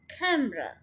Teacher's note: Stress first syllable पे डाल के और इसको सिंपली र कह देना है, कैमरा। कैमरा नहीं, जैसे हम बहुत ढीले से अंदाज से कह देते हैं, कैमरा।